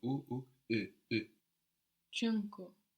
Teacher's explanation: we can make a u sound, u, and then leaving our lips in that position, try to make an e to get this sound.